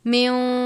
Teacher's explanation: اب یہاں پر نون من نہیں پڑھیں گے بلکہ میوں پڑھیں گے، واو کی آواز آنی چاہیے